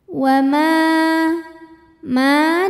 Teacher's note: Mad Thobi'i dahohiri sebab ada Alif yang sebelumnya huruf berbaris fathah cara bacanya dipanjangkan mimnya dua harakat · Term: mad tabi'i zahiri